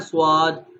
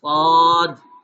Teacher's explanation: اس کی ادائیگی کرتے وقت واو کی آواز اس میں نہیں آئے گی، بلکہ اس کا یہ لفظ کیسے پڑھا جائے گا، صاد الف اور دال، صاد کیسے پڑھا جائے گا جی، صاد الف اور دال، صاد، ٹھیک ہو گیا جی۔